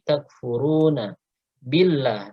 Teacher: Furu runya matobi'i takfuruna billah. Nah ini lafaz jalalahnya dibaca tarqiq ya, karena didahului oleh huruf berharokat kasrah